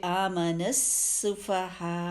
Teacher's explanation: پھر کما پہ دیکھیے پھر مد آگے مد کو ٹائم دیں گے، پھر آمن السفہاء، یہاں پہ دیکھیے ایک تو سین مشدد کو اچھا سا ٹائم دیں گے، اور سین کی آواز کیسی ہوتی ہے؟ اچھی شارپ سی آواز ہے، سیٹی کسی آواز